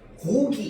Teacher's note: 안 울림 소리 K로도 발음되는데 울림 소리인 기억 G로도 발음이 된다는 거야. 그러니까 이게 뭐냐면 우리가 예를 들어서 고기 이렇게 하면은 얘기 앞에서 말하는 기억이랑 뒤에서 말하는 기억은요 좀 다릅니다.